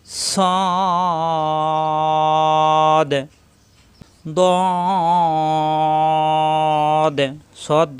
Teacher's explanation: হবেছা হবে না সিনে যেমনছা সদে ছ সরলি পরিমাণ টান হবে মোটা হবে মুখ গোল হবে না